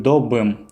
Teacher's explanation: Здесь мы прибавили притяжательное окончание Все вместе будет добым, то есть буква «п» изменяется на звонкий аналог, букву «б» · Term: регрессивную ассимиляцию